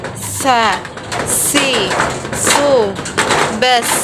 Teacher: Diucapkan dengan menggunakan lidah yang terdekat hampir di atas dua gigi seri bagian bawah sebagaimana kita melafalkan huruf za, tapi diiringi dengan mengalirnya suara dan mengalirnya nafas secara bersamaan. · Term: huruf sin